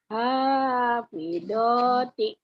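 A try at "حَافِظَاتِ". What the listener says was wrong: Hafizzo. Zonya agak rapuh ya Bu ya. Hafizoti.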